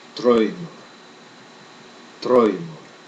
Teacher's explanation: D has a sound halfway between the English D and T.